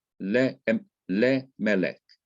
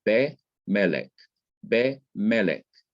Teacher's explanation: the simple schwa is like that E, which you pronounce so fast that you can hardly even hear it